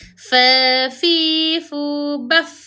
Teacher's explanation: Baf ada hamas iaitu ada nafas. Nafas kita masih lagi keluar. Ha nafas kita masih lagi keluar.